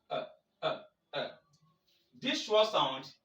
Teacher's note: Because every single vowel in the English language can become the schwa. It is the weak vowel, central vowel. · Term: schwa sound